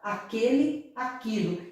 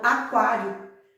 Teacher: Porque o U não está sendo pronunciado.